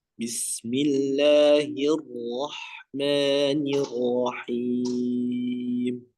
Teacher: huruf rnya tebalkan lagi